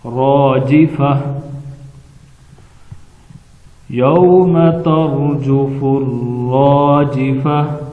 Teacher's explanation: ترجفر، راجفہ، آخر میں تا ہے، تا وقف کی حالت میں ہا بن جاتی ہے اور ساکن بھی ہو جاتی ہے۔